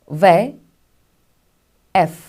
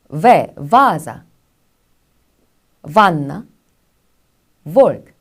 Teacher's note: 이 입술 소리인데요. 아랫입술을 윗니에 댔다가 떼면서 내는 소리라고 해서 순치음이라고 이야기를 하죠.